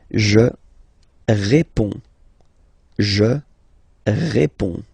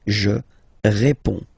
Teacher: you can see that D and S here are not pronounced.